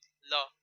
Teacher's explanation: तो पार्श्विक ध्वनि आपकी जो दी गई है यहाँ पे ल, ल आपकी पार्श्विक ध्वनि में आएगा